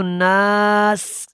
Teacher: غنہ کرنا ہے، اور یہاں پہ جب وقف کرنا ہے تو ناس، سین کی سیٹا کی آواز اینڈ میں آئے گی اور زیر ختم ہو جائے گی